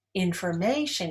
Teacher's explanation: Information is stressed on the third syllable.